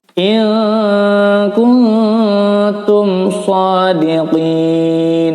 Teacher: In kuntum shadiqin, mim sukun bertemu shad izhar syafawi, bacanya jelas